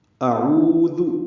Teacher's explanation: عین اس کے اوپر پیش ہے, آگے واو ساکن ہے. حمزہ اقصی حلق سے ادا ہوتا ہے. واضح آواز سے اس کو ادا کرنا ہے, بالجہر پڑھنا ہے.